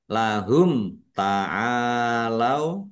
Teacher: Ain fathah alif mad thobi'i panjang dua harakat. · mim sukun bertemu dengan huruf ta bacaan idhar safawi dibaca jelas